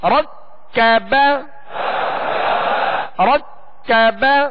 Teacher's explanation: را کو پر کریں گے، کاف کو باریک